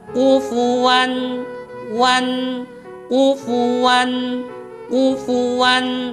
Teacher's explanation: karena di sana ada tanwin bertemu hamzah, itu adalah izhar khalqi. Dia dibacanya jelas tanpa dengung, tidak boleh didengungkan. Dan sifatnya itu jelas, tidak boleh dibaca wan, tidak boleh.